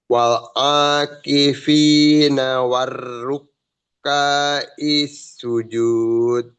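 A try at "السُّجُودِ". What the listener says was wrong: Sujud. Jangan lupa qalqalah.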